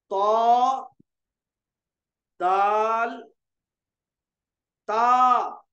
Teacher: नोके जबान और ऊपर के दरमियानी दांतों की जड़ से 3 हरूफ तो, दाल, ता निकलते हैं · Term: नितुई